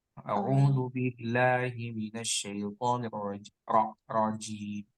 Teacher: itu di bacaan ro latih ya. Huruf ro ya. Ro itu tebal ya. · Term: Ro tebal